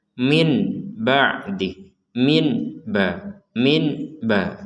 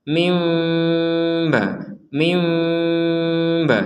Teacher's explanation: nun sukun bertemu ba, maka ba ini dibacanya seakan-akan seperti huruf mim, tapi setelah itu keluarnya huruf ba